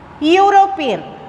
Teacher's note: when we say European, EU sounds as U. It's not a vowel sound, it's a consonant sound.